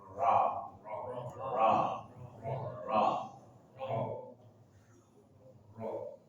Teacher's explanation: lidah bertemu dengan gusi dua gigi seri atas